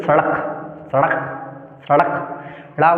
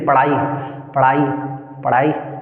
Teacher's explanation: झटके से नीचे की ओर आए जैसे बो सड़क सड़क सड़क ड़ बोलते हो तो जीभ झटके से नीचे आती है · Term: द्विगुण व्यंजन